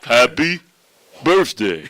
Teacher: So, you got t h in the middle there, but it makes a f sound.